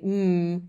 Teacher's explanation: if you say mmm you'll feel the vibration that's the idea of voicing